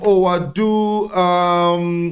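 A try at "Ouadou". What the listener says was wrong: Apparently, it's pronounced Wadu. So the OU, take it as a W.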